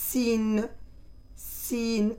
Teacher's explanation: on serre les dents et c'est comme on entend un sifflement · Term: la lettre sine